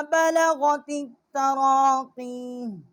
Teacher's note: اور بالغت التراقیہ، تا جو ہے اس کو ہم نے التراقیہ کی جو تا ہے، تا کو ہم نے تا کے ساتھ مشدد کیا ہے